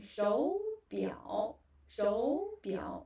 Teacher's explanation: when third tone together, actually the first third tone becomes a rising tone, and the second third tone, it is a third tone, but you don't have to say it fully. Okay, you just say it in a short way.